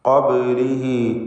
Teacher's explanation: ബാഇൻ്റെ സുക്കൂൻ ഖൽഖല സുഗ്റ നൽകി ശബ്ദം ഹറക്കത്ത് പോലെ ചലിപ്പിക്കേണ്ടതാണ്. ഖബ്ലിഹി പദത്തിൻ്റെ അന്ത്യത്തിലുള്ള ഹൗദ്ദമീറിന് മദ്ദുസ്സിലത്ത് സുഗ്റ എന്ന 2 ഹറക്കത്തിൻ്റെ അളവിൽ മാത്രമുള്ള ദീർഘം നൽകും.